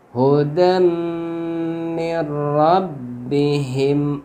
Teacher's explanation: Nun mati bertemu ro, ini hukumnya idgham bila gunnah. Jadi nunnya diidghamkan ke ro tanpa gunnah.